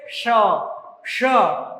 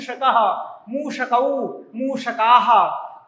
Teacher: श मूर्धा से इसका उच्चारण होता है। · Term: मूर्धन्य श